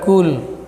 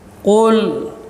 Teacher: harus dibaca dengan menekan bagian punggung lidah, itu bagian lidah akhir, ya, pangkal menempel pada langit-langit yang lunak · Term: huruf qaf